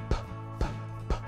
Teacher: Your lips are doing the same thing, but one is voiced and one is voiceless. So p is a voiceless version of b.